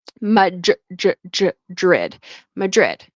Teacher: DR, okay? Um, it kind of turns into a JR sound.